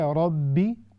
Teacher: جب ہم پڑھیں گے ربی تو ہم یہ جو کرکراہٹ ہوتی ہے را میں یہ نہیں آنی چاہیے